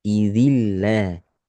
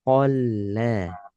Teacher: Ketika ibu baca yauma idzil, itulah lam sukun yang tipis.